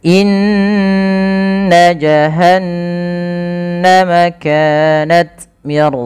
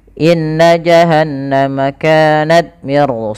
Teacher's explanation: suara nnya dipanjangkan dua harakat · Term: gunna